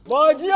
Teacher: In Kumase, in Asante Chi, you would mostly hear people say this as Bordie without the R sound.